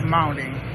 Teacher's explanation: American and Australian speakers often replace T with a glottal stop